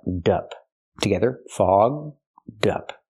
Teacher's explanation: link the D sound to the second word up so you have dup together